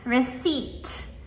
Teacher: The p is right before the t, but we only pronounce the T. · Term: silent p, silent P